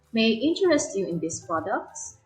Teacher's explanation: Now, if the question begins with an auxiliary word, such as do, did, is, are, was, or were, or a modal word like may, can, could, would, and more, there will be an upward intonation in the last syllable of the last word